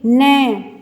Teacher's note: तो इसकी आवाज़ हमारे नाक में से निकल रही है तो ये नासिका का हो गया। और ये हमारे दांत को पीछे से स्पर्श कर रहा है तो इसलिए दंत प्लस नासिका, तो दंत नासिका हो गया, यानी कि दो दो स्थानों से ये इनकी ध्वनि निकल रही है।